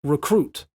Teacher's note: So normally we would say recruit. So the ruh is what we don't stress.